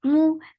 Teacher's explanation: میم کے پر ضمہ، circle your lips and the sound is very short